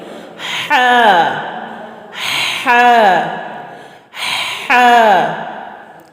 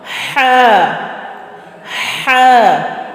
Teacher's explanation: ہا میں بچوں ایک ہوا جو ہے وہ ہمارے حلق سے باہر نکلتی ہے